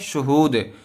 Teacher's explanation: جب یہاں آخر میں ٹھہریں گے تو دا ساکن ہو جائے گی، شہودن سے شہود، اور دال حروف قلقلہ میں سے ہے، اس وجہ سے یہاں پر قلقلہ ہوگا